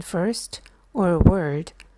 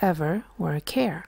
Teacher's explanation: the sound er is used in stressed syllables and it sounds a little tenser than the other er used at the end of the words like ever or care